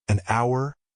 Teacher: the H in hour is silent so it starts with a vowel sound